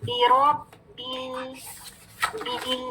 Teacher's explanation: آگے دیکھیں لام ساکن سے ملا رہے ہیں. لام ساکن تھوڑی سی آواز چل رہی ہے